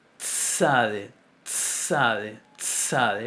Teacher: Tiene una primera fase oclusiva de una T y después tiene una fase fricativa de una S.